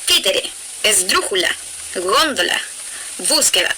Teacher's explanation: Esta clase de palabras son las acentuadas en la antepenúltima sílaba. Siempre se escriben con tilde. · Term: Esdrújulas